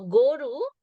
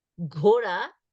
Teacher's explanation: So goru, unaspirated, ghora, aspirated.